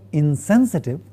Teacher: you see the nasal being dental nasal because the following sound sa is a dental or alveolar. The two reasons are very close by, therefore the nasal in the negative prefix is a dental nasal.